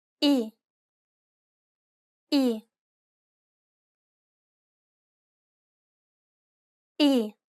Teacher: it's identical to the i in sit be sure to pronounce it nice and short